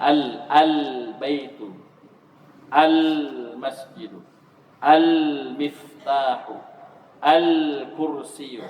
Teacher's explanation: Ketika alif lam masuk kepada kata yang awalnya huruf qamariyah, maka lamnya dibaca dengan jelas.